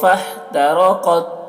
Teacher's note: قاف کو پر پڑھیں گے، قاف حروف مستعلیہ میں سے ہے